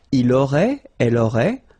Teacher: Il aurait, elle aurait, final T not pronounced.